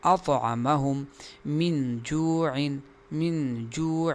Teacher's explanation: حمزہ کو ظاہر کر کے پڑھنا ہوگا اور عین کو بھی ظاہر کر کے پڑھنا ہوگا